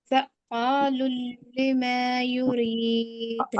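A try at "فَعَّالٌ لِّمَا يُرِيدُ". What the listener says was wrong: आइन है ना, आइन आइन आइन, फ़आ फ़आ फ़आलुल लिमा युरीद। अब आइन डिफिकल्ट है। फ़ा फ़आ फ़आ, रोकना है ना, आप रोक रहे हैं। फ़ा फ़ा फ़आ, अलिफ मत भी है। फ़ा फ़ा फ़आ, नहीं, फ़आलुल लिमा, लुल्लिमा, लुल्लिमा। होगा, नहीं रुकिए, यहाँ पे आप लोग ने ऑब्जर्व किया होगा कि तस्दीद पे वक्त देना ही देना है, नहीं देंगे तो तिलावत सही नहीं होगी।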